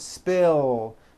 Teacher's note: spill ends with a voiced l sound